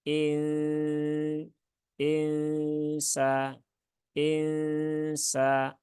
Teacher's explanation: jadi ditahan dulu tiga harakat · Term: ikhfa ausat